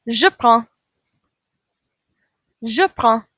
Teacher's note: We don't hear that D at the end. We're going to end with a nasal sound.